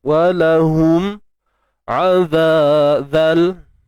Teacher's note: Mim mati jumpa ain, izhar syafawi. Jelaskan huruf mim mati. Walahum azal, asli sini azabun, hamzah dari atas alim, ma'ari lisukun mal.